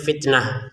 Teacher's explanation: kalau kita berhenti ya ini menjadi huruf ha karena berhenti. Kalau dilanjutkan dia menjadi huruf ta lagi.